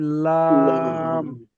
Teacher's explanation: জিভের আগার কিনারা এবং সামনের উপরের দুই পাশের দাঁতের গোড়ার সাথে লাগিয়ে উচ্চারিত হয়